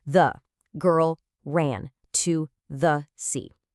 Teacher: Each word gets the exact same weight. It sounds totally robotic and it's actually harder to understand because your listener has no idea which words to focus on.